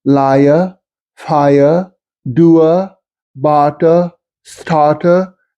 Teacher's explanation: The non-rhoticity of the consonant R sound remains the same, except before a vowel.